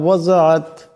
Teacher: ওয়াজাত এখানে জদ আছে, আওয়াজটা মোটা করিয়া পড়তে হবে।